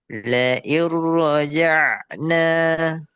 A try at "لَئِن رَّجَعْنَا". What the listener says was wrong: Roknya tebalkan lagi. La iroja'na. La iro. La iro. Nah, la iro.